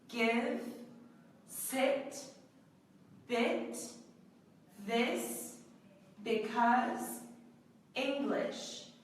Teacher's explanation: it's a short voice sound so we don't pronounce it for quite as long but we do use our vocal chords when making the sound